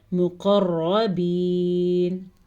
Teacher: قاف کو موٹا پڑھیں گے کیونکہ قاف حروف مستعلیہ میں سے ہے، را کو بھی موٹا پڑھیں گے کیونکہ را پہ زبر ہے، اور یہ یا مدہ ہے، اسے ہم با زیر یا بی، یہ والی یا مدہ ہے تو اسے ہم کھینچ کے پڑھیں گے، مقربین۔